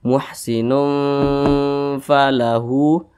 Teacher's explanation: didengungkan itu suaranya itu kita tahan atau kita panjangkan kira-kira panjangnya itu dua ketukan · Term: ikhfa Hakiki